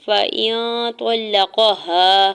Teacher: فَإِن طَلَّقَهَا، فا کے اوپر سنگل زبر جلدی سے ادا کرنا ہے، حمزہ کی زیر کو نون ساکن کے ساتھ ملاتے ہوئے نون ساکن پہ اکفا کریں گے